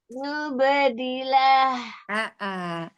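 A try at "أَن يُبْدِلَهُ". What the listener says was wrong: Idgham bil gunnahnya mau temponya lebih dilamakan lagi Eyang ya, setengah ya-nya itu setengah keluar dari mulut, setengah keluar dari hidung ya. Ayyubadilah.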